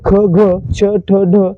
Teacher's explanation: आता मित्रांनो, एक मूळ व्यंजन आहे ह, ज्याला आपण महाप्राण व्यंजन म्हणतो, आणि जी इतर व्यंजने आहेत त्यांच्यामध्ये उच्चार करताना ह चा उच्चार देखील होतो, म्हणून त्या व्यंजनांना देखील आपण महाप्राण व्यंजने म्हणतो। असे एकूण 14 महाप्राण व्यंजने आहेत।